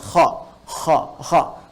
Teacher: Ini ketika kita ucapkan, itu bagian pangkal lidah di paling ujung itu menyentuh ke langit-langit. Sehingga ketika dia ke atas, suaranya lebih tebal.